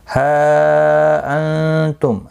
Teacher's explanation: ہا مد منفصل ہے، 3 الف کی مقدار کے برابر کھینچ کر پڑھیں گے